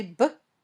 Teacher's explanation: when you say book both your lips touch and then pop open this sound is voiced